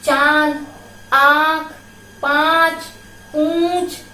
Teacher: चंद्र बिंदु का उच्चारण नाक और गले दोनों से होता है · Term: अनुनासिक